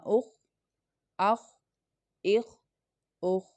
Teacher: خو is a مستعلیہ letter, it means bold letter. So اس کو ہم تھکر ٹون میں پڑھیں گے